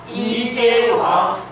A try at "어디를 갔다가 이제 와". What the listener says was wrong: 거쳐서 내려오지 말고 바로 팍 떨어뜨려야 돼. 어디를 갔다가 이제 와